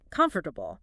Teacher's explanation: The stress is on the first syllable, right?